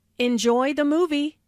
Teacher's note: Notice how the intonation rises on movie.